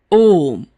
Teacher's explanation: प्लुत स्वर के उच्चारण में दीर्घ स्वरों से अधिक समय लगता है किसी को दूर से पुकारने में इनका प्रयोग देखा जा सकता